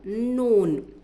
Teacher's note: ज़बान की नोक को ऊपर के दांतों के मसोड़ों को लगाने से नून निकलता है।